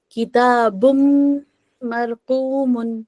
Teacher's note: تو کتابن نہیں پڑھیں گے ہم، نون کو ہٹا کے ہم ادغام کر کے اس کو میم بنا دیں گے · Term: ادغام بغنہ